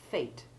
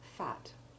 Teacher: making the A long in the word fate, which without it would be fat